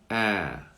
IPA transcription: æ